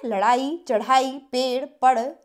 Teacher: इनके उच्चारण में जिभ को ऊपर उठाकर आगे की ओर उत्क्षिप्त यानी फेंका जाता है। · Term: उत्क्षिप्त ध्वनियां